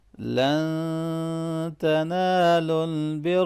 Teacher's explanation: لن یہاں پر نون ساکن پہ اخفا ہوگا